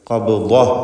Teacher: ശേഷം ദ്വാദിനും പൂർണ്ണമായ തഫ്ഖീമാണ്. ഖബ്ദതൻ എന്നതിൽ വഖഫ് ചെയ്യുമ്പോൾ ഖബ്ദ എന്ന് സുക്കൂനുള്ള ഹ ആക്കി വഖഫ് ചെയ്യണം